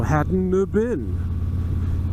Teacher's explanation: So you just continue the voicing in between the swallowed T and the B that comes after it.